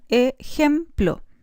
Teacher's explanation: La segunda sílaba se compone de un núcleo vocálico E, el ataque, que corresponde al fonema o alófono velar fricativo sordo, y la coda, que corresponde al bilabial nasal. La última sílaba, plo, tiene un ataque formado por el grupo consonántico PL más núcleo O, pero no tiene coda.